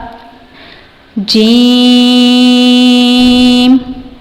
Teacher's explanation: اس حروف کو ہم نے زبان کے وسط حصے سے ادا کرنا ہے، اس کے بالمقابل تالو سے۔ اس کی حرکت ہم نے اسی طرح لمبی کرنی ہے کیونکہ اس یا مدہ آ رہا ہے، وہ انشاءاللہ ہم آگے پڑھیں گے۔